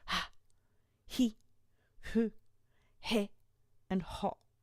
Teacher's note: We don't stop the air when we say the letter H. It's just like we blow it directly out of our mouths with a ha, hi, hu, he, and ho.